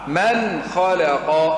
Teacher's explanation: أظهر النون عند الخاء